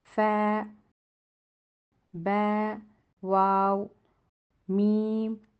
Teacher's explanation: یہ 4 حروف فا، با، واو، میم ہونٹوں سے ادا ہوں گے